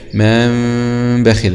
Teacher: شبه تلامس قليل جدا جدا بين الشفتين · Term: الإقلاب